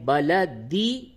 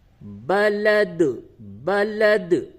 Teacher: اگر آپ کہتے ہیں بلدی تو قلقلہ نہیں ہو رہا ہے، لیکن جب وقف کریں گے بلد، بلد، اب یہاں پہ قلقلہ ہوگا